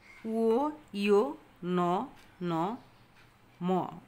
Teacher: এই ধ্বনিগুলো উচ্চারণের সময় বাতাস নাক দিয়ে বের হয়ে আসে। এই জন্যে এই ধ্বনিগুলোকে বলা হয় নাসিক্য ধ্বনি।